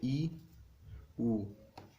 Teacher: संवृत स्वर क्या होता है, इसमें मुख कम खुलता है